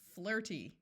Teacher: the Y has the long E sound because it's in an unaccented syllable at the end of the word